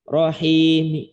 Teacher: Rahim ya, mi-nya dibaca pelan. Dan cuma 2 harokat rahim. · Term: ar-raum